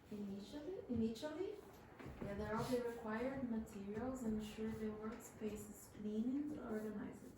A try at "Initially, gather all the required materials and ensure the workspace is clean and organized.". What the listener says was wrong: Yeah, very good.